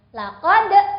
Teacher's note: huruf dal yang sukun termasuk qalqalah, jadi boleh ada e di belakangnya.